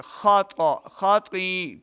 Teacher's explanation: خا اور طا دونوں حروف مستعلیہ سے, ان کو موٹی آواز کے ساتھ پڑھنا ہے · خا اور طا دونوں کو موٹا پڑھیں گے. خطا خطی, ٹھیک ہے جی.